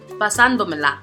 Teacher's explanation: This word has 5 syllables and the prosodic accent falls on the 2nd syllable, which is the 4th to the last.